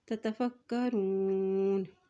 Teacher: کاف کے اوپر شد ہے، اس لیے فا کی زبر کو کاف کے ساتھ ملائیں گے